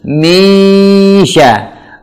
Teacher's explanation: sya itu huruf yang makhrajnya ada lidah bagian tengah bersentuhan dengan langit-langit bagian atas. Jadi tidak ada kaitan dengan mulut. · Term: huruf shin